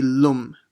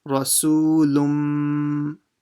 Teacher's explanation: instead of saying the lun with a n sound at the end, the lam will join straight to the mim and will ignore the n sound. So it will become lum.